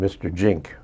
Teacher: the Z sound is not something comfortable for Saipanese to say. So it comes out like a J.